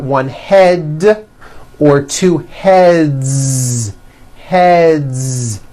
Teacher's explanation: Now the word head ends with a voiced D, d, d. So we've got one head or two heads.